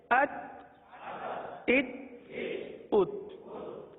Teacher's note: इस हर्फ में, हर्फ ता में कलकला नहीं होगा। आवाज को जमा कर पढ़ें